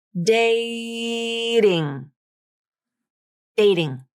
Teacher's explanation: You'll notice that when these syllables link together, the T moves over to the next syllable. The T now begins that unstressed syllable, ting, and it switches to the flap. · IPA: ɾ